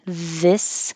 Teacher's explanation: But if you say this is, now you have a voiced TH, this, and the IS sounds like a Z